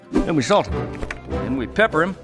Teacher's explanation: >> Natives often drop the first sound in pronouns like him, her and them. In this case, the H in him is dropped and connects to salt and pepper.